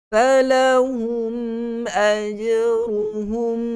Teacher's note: Falahum ajruhum, itu yang salah. Gunnah tetap ada sedikit pada huruf mim itu, kerana huruf mim yang bertanda sukun juga ada sifat gunnah. Tetapi bukanlah hukum di sini untuk kita baca dengan panjang pada gunnah tersebut.